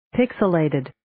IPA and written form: 'pɪksɪ,leɪtɪd (Pixilated)